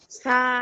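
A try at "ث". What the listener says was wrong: সাকে একটু নরম করে, সাকে একটু নরম করে পড়তে হবে। সা, এটা শক্ত করা যাবে না। সা।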